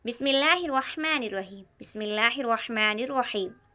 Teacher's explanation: दूसरी चीज़ है तस्मिया, बिस्मिल्लाहिर्रहमानिर्रहीम, बिस्मिल्लाहिर्रहमानिर्रहीम। यहाँ तस्मिया में रहमान और रहीम का रा मोटा पढ़ा जाता है। रहमानी रा के ऊपर ज़बर है और रहीमी रा के ऊपर ज़बर है, और हमने पढ़ा रा के ऊपर ज़बर या पेश हो तो रा पुर पढ़ा जाता है।